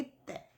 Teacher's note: जीभ, ऊपरी दांतों को स्पर्श कर रही है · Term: दंते व्यंजन